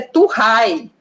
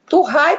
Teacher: o v é trocado pelo r